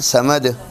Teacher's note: دال کے اوپر پیش ہے لیکن ہم ساکن کر رہے ہیں